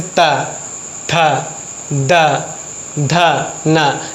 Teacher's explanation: जब जीभ दांत पे टच करती है तो क्या बोलेंगे उसको? दंत। और ऊपरी दांत के निकट से टच करके जब साउंड निकलती है ता, था, दा, धा, ना।